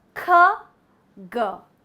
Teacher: the back of your tongue touches the soft palate and drops down